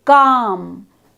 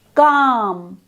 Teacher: This time, as you say the vowel aloud, calm, you should feel that the tongue elevation is towards the back of the mouth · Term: back vowel sound